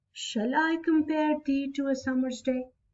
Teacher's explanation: So my stress was more on I. So I got it that shall is unstressed and I is stressed. यहीं से पता चल गया कि this is iambic meter.